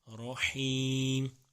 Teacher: را کے اوپر زبر ہے اس لیے موٹا